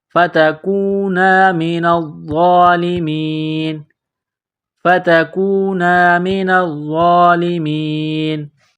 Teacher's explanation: جب یہاں وقف کریں گے اس آیت پر تو نون کو سائلنٹ کریں گے